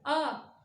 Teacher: हमारे जो जो जीभ है वो पीछे की साइड लग रही है, बिल्कुल आ, जीभ हमारी यहाँ लगती, मतलब पीछे की साइड लगेगी। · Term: पश्च स्वर